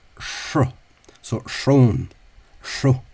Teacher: SR in Ulster tends to have a retroflexive, retro meaning back, flexive meaning bend.